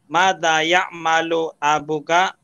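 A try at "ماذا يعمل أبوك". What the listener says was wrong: Abuka alba panjang sedikit. Ba-nya panjang. Abuka.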